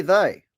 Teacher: a white southerner doesn't turn the th sound into an f or a d